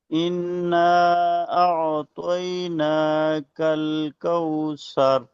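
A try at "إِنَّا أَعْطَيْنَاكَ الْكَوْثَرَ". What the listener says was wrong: उस्ताद जी इन्ना में गुन्ना नहीं हुआ है।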